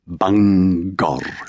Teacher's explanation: separating the syllables but somehow leaving the G on both sides of the chasm rolling the final R